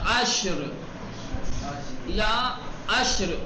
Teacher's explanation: را ساکن اس سے پہلے شین وہ ساکن, تو پھر اس سے پہلے عین اس پر پیش ہے تو تفخیم کے ساتھ